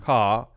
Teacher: almost like there isn't an R there it's very open